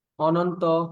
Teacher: না অর্থে শব্দের আদিতে অথবা অন থাকলে প্রথম অধ্বনি বিবৃত হয়